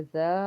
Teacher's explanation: अलिफ से पीछे जबर होने की वजह से जा को लंबा पढ़ेंगे